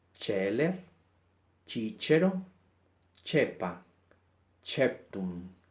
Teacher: Si viene acompañada de e, i o los diptongos e, entonces suena como la ch, es decir, como se pronunciaría en el italiano